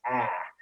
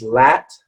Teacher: this is open sound it's very low it's your jaw is dropping